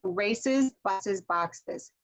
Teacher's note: I can't just go straight into one of these sounds that is very hissy without making an extra syllable, okay? So I have to say races.